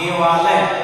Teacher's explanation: तो अ और आ मिलने के बाद से क्या हो जा रहा है, आ हो जा रहा है, दोनों का दीर्घ हो जा रहा है